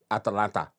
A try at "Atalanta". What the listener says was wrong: There's an A after the T.